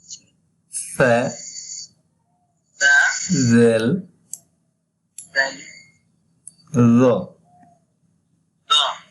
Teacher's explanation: আপনার জিহ্বার আগা অংশটা উপরের সারির দাঁতের সাথে লেগে উচ্চারণ হবে